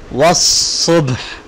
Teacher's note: واو صاد زبر وص صاد با پیش صب وص صب، حاضر ہی وص صب ہی وقف وص صبح، اینڈ میں ہا کا ساؤنڈ آ رہا ہے اور با کے اوپر قلقلہ ہوگا